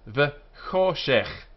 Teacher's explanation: the harsh sound at the back of the throat, like loch